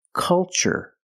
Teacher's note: the first syllable is a short u like cup and up uhuh make a relaxed sound C culture and cultural Let's test